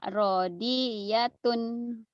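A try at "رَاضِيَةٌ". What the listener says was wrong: Rohnya panjang. Radiyatun. Radiyatun. Radiyatun.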